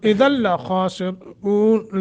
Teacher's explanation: ला मुशद्दत तो है, इदगाम तो होगा, गुन्ना नहीं होगा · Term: इदगाम बगैर गुन्ना